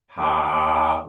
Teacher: Instead of making it more breathy, we can do it very vocally.